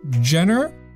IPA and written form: ˈdʒɛnɚ (genre)